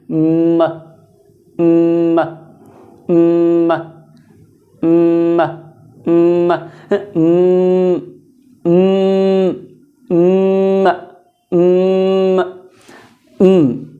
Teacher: आप गौर करेंगे तो नाक से बोला जाए, इसलिए नेजल।